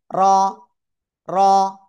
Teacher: র 1 থেকে 2 বার এভাবে উঠানামা করবে